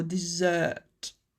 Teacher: the SS almost becomes like a Z sound so dessert